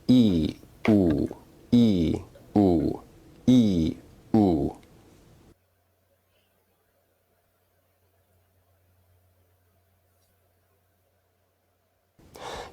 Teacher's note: if you say these vowels in succession you may notice that your tongue is moving forward and backward